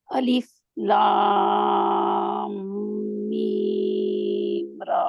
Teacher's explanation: आप लाम के साथ मीम को मर्ज करेंगे